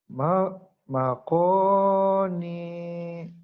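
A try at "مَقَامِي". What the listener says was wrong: bukan makoni itu mah mi mas.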